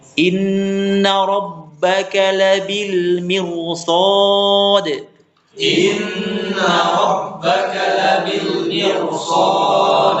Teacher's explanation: ketika ada huruf roh sukun, sebelumnya kasroh namun bertemu huruf isti'la. Ya, bertemu huruf itbaq, maka ditebalkan. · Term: roh tebal